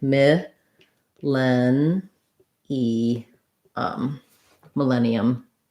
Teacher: Millennium is stressed on the len syllable, and the first syllable is unstressed. So millennium, thinking about it like mi, len, e, millennium. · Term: second syllable stress